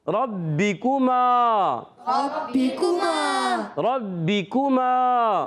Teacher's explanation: الف مدہ ہے، اس کو ایک الف کھینچیں گے